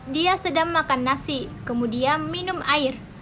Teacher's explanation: Memiliki jeda yang membedakan antara tindakan makan dan minum. Dalam artian lain, jeda yaitu pemutusan arus bunyi-bunyi segmental ketika diujarkan oleh penutur.